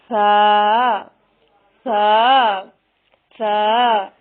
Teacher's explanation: سا کی ادائیگی میں زبان کی نوک کو سامنے والے اوپر کے 2 دانتوں کے اندرونی کناروں سے نرمی سے لگا کر باریک آواز میں پڑھنا ہے۔